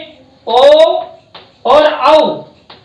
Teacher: इनका दोनों का उच्चारण स्थान कंठोष्टम, यानी कि कंठ और ओष्ठ